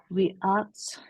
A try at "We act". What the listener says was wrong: We act. We act. Nggak ada S-nya. We act.